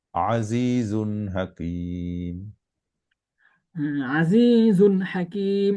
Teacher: এখানে কোন গুনা হবে না তাড়াতাড়ি পড়তে হবে স্পষ্ট তানবিন স্পষ্ট উচ্চারিত হবে